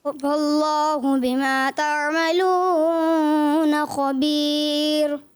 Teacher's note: انہوں نے واو مدہ کو بھی زیادہ کیا، اور انہوں نے را کو باریک پڑھنا تھا، اس کو پر کیا